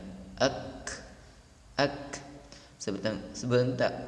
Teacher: Kaf ketika mendapatkan huruf sukun, maka dia berdesis ak, karena lebih dominan huruf ini keluar udaranya.